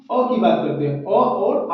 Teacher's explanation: अ और आ की तो ये कंठ से कंठ मतलब गला से बोला जाता है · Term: कंठ स्वर